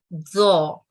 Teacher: اور زو, یہ حروف تفخیم ہے, زبان کی نوک کو جیسے ہم تو کی ادائیگی کرتے ہیں اسی طرح اوپر کی طرف لے جائیں تو اس کی آواز آتی ہے, زو. اس کے بعد قاف حروف تفخیم ہے, منہ کو گول رکھتے ہوئے حلق سے اس کی ادائیگی ہوتی ہے, قاف.